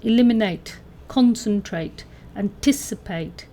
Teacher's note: the stressed syllable is two syllables before the ending